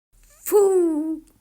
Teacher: повітря натрапляє на перешкоду губи Отож звук ф твердий приголосний знайдемо звук ф у словах діти промовляйте назви предметів чітко виділяючи